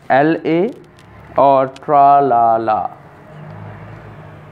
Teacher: For the literal L, the tip of the tongue rises to the alveolar ridge, leaving the rest of the tongue down, permitting the air to escape literally over its sides. अब जो हवा है वो tongue की sides से निकल रही है